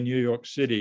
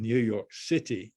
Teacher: i would say new york city now with a d rather than new york city with a t